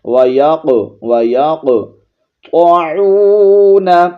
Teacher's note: میثاقہ وَيَقْطَعُونَ، قوف حروف مستعلیہ میں سے بھی ہے، اس کو موٹا پڑھیں گے، اور یہاں پر قوف پر جزم آ گئی ہے تو قلقلہ بھی کریں گے